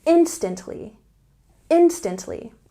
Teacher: we have a stress on the first syllable